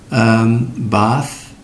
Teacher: You don't use your pita swara, your vocal cords. Bath. It's just breath. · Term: voiceless